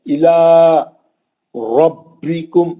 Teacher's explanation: रा को मोटा पढ़ना हमेशा, जबर रहा, और बा को सख्ती से इसलिए पढ़ना, तजदीद है।